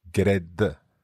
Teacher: It almost sounds like there's a vowel between the G and the R.